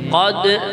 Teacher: ini dal sukun dibaca qalqalah ya